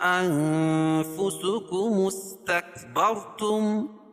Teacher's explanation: بما لا تهوى انفسكم استكبرتم، اور یہ اصل میں استکبرتم ہے. حمزہ وصلی ہے اور یہ ملانے کی صورت میں یہ جو حمزہ گر جائے گی اور میم کو سین میں ملائیں گے